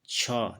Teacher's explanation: इसका उच्चारण जो है स्थान जो है कहाँ से हो रहा है? तालु से हो रहा है, तालु से। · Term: तालव्य